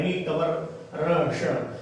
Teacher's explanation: तो तालु, तालु से फिर ऊपर ऊंचाई पे लगता है री टवर र श। जब ये बोलते हैं तो बिल्कुल ऊंचाई पे हमारी जीभ लगती है, तो ये मूर्धा है